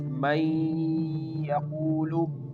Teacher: Here we merge the noon into the ya. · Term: Idghaam